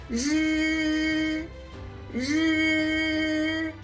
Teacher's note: The tip of the tongue rolls up very close to the roof of your mouth, vibrating the vocal cords when producing the sound, similar to s in the English word Asia.